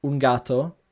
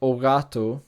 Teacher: plosives such as g become approximants except when they follow a nasal consonant